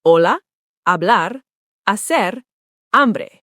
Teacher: Hola, not hola, just hola. The H is invisible. Hola, hablar, hacer, hambre. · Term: Silent H